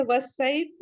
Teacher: یہاں پہ بھی شمسی کا فائدہ ہو رہا ہے. الف لام نہیں پڑھیں گے ڈائریکٹ واو کو صاد سے ملا دیں گے.